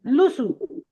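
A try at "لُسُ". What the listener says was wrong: লাসু নয়, লুসু। লাম পেশ লু, সা পেশ সু, লুসু।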